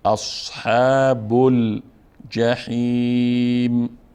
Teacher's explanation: أصحاب بل حرکت آخر حرف ب پیش است، پیش وصل میکنیم، میچسبونیم به لام و الف تلفظ نمیکنیم